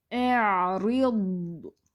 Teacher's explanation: اس کو نرمی سے آپ نے ادا کرنا ہے ضاد ساکن کو، اور نرمی سے آہستہ سے اس کو چھوڑنا ہے · ضاد ساکن پہ نا تھوڑی سی آواز چلتی رہے گی، اس کو جلدی سے چھوڑ نہیں دینا کہ کلکلا ہو جائے، جیسے اعرض، رید کریں گے تو وہ کلکلا ہو جائے گا۔